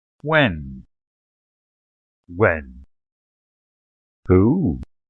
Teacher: all falls end low and the major difference is how they begin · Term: falling tones